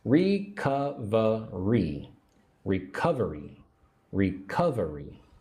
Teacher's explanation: Put the emphasis on the second syllable.